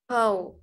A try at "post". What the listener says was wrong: Là từ từ, pow thêm chữ sau chữ tờ nữa.